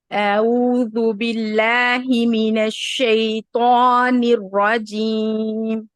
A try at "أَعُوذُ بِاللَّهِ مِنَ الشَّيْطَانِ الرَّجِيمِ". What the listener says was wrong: باللہ میں بھی تھوڑا سا ایک اعوذ باللہ میں بھی الف کو تھوڑا اونچا کیجیے، لمبا کیجیے، یعنی اوپر کی طرف لے کے جائیے. اعوذ باللہ باللہ لا نہیں، اعوذ باللہ من الشیطان الرجیم.